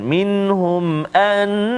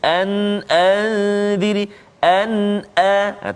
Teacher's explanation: kita kena baca jelas, kita kena baca izhar, kita tak boleh baca dengung